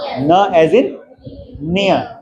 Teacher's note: front और blade जो है हमारे टीथ रिज को टच कर रहा है